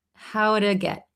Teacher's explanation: So maybe this t in two becomes a flap t.